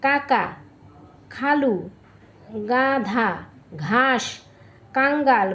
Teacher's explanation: যেসব ব্যঞ্জন ধ্বনি উচ্চারণের সময়ে জীভের পিছনের অংশ উঁচু হয়ে আল জীভের কাছাকাছি নরম তালুর কাছে বায়ুপথে বাধা সৃষ্টি করে সেগুলোকে কন্ঠ ব্যঞ্জন বলে।